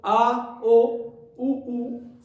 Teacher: ध्यान से देखोगे तो ये जीभ के पीछे से बोले जा रहे हैं, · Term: पक्ष स्वर